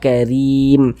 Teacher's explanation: Huruf ra memiliki harokat kasroh, dibaca tipis juga karim. Rim dibaca panjang, ini namanya mad arid li sukun.